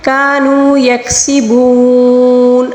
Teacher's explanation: آخر میں واو مدہ کو ہم 3 الف کے برابر کھینچ کر پڑھیں گے، کیونکہ نون کے اوپر جو زبر ہے ہم جب اس کو وقف کے دوران ساکن دے کر پڑھیں گے تو واو مدہ کو ہم 3 الف کے برابر کھینچ کر پڑھیں گے، ٹھیک ہے۔